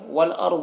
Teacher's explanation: والارض، را کو اور ضاد کو دونوں کو پر پڑھیں گے۔